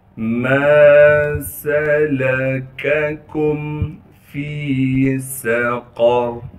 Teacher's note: فا کو یا مدہ سے ملا دیں گے، یا مدہ ہونے کی وجہ سے فا کو ایک الف کے مقدار کھینچیں گے، سین میں سیٹی ادا کریں گے، قاف کو موٹا کر کے پڑھنا ہے، را بھی موٹا پڑھا جائے گا۔